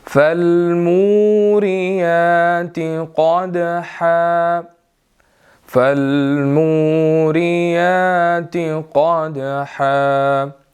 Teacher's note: اب یہاں پر موریاتی، میم کے بعد واو ہے، ہم نے اس کو بھی 1 to 2 سیکنڈز جو ہے وہ لمبا کرنا ہے، اور اسی طرح یا کے اوپر کھڑی زبر ہے، آگے قاف، اور قاف موٹا ہے، دال کلکلے والا ہے، اس کو جھٹکا دے کر پڑھنا ہے۔